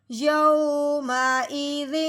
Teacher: ہاں جی، اب یعنی کہ اب ہم نے اس تنوین پہ غنہ نہیں کرنا، بغیر غنے کے اظہار کے ساتھ پڑھنا ہے